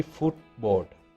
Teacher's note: there is no d sound in the middle of that word